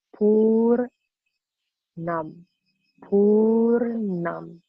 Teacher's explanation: You again roll the tongue back, and then the bottom of the tongue touches the dome of the palate.